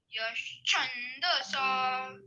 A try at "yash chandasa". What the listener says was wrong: Cha, don't give a higher swara. It is Udata. Yash chandasa.